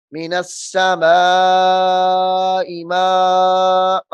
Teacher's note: اب من السماء کے اوپر بھی مد جو ہے مد لازم ہے اور ما کے اوپر بھی مد لازم ہے، دونوں 3 4 الف کے برابر لمبی ہونے والی مدات ہیں